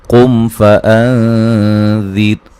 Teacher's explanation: قم فانذر، یہاں میم ساکن کا اظہار ہے، قاف کو موٹا ادا کریں گے۔ فان، نون ساکن کا باریک اخفا ہے، ذال کو نرم ادا کریں گے۔